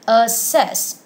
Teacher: assess with the stress on the second syllable